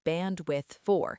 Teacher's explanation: If you say it slowly, you pronounce the D in bandwidth and the O in for, bandwidth for.